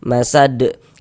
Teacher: Nah, kemudian huruf dal ini kedudukannya menjadi sukun, menjadi mati. Sukun sebab kita sukunkan karena berwakaf, maka dia mantul. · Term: qalqalah kubro